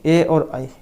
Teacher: ए दैतव कंठ तालु, ए और आई ये कंठ और तालु से बोले जाते हैं।